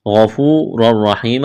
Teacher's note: غفور الرحیم، غین کو موٹا کرنا ہے، واو مدہ ہے، الف کے برابر کھینچنا ہے، را کو موٹا کریں گے، 2 زبر تنوین ہے، تنوین کے بعد را ہے، ادغام کریں گے بغیر غنہ کے، را کو موٹا کرنا ہے۔